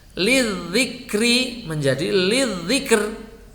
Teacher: ini ro sebelumnya sukun dan sebelumnya lagi kasroh, maka ketika waqaf dibaca tipis.